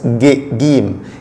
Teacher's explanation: en Égypte seulement, ça se prononce gim, comme le G en français, gim. Mais à part l'Égypte, il se prononce jim, jim, comme le J.